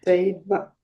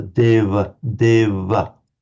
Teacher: It's pronounced certainly among the Northern Indians between vowels as something between a V and a W. It's with the lips slightly together.